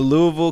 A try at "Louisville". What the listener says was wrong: You're supposed to like say it in 2 syllables, like